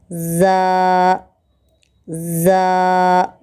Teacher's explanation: زبان کی نوک کو نیچے کے دانتوں کے اوپری حصے کو لگانے سے زا نکلتا ہے